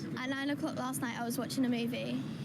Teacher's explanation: my friend's house i was playing football i was out drinking when the word was is unstressed as in the examples we've just heard then the vowel sound changes to a schwa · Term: weak forms